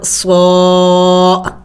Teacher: صاد سٹی والے حروف میں سے ہے، پڑھتے وقت منہ سے سٹی کی آواز نکلنی چاہیے